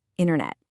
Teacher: That first T often just disappears completely and it becomes internet.